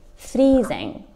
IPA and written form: ˈfriːzɪŋ (freezing)